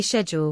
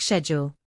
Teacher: Americans say schedule with a SK sound, while many Brits say it with a sh sound